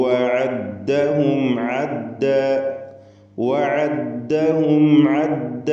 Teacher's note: സാക്കിനത്തായ മീമും ഐനും വന്നിട്ടുണ്ട്. ഇൽഹാർ ഷഫവി മണിക്കാതെ വെളിവാക്കുക. ഐനുകളൊക്കെ ശ്രദ്ധിച്ചുച്ചരിക്കുക.